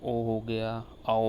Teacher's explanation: कंठोष्ठ जो होता है कंठ और ओष्ठ दोनों से बोला जाता है, उनको कंठोष्ठ कहते हैं।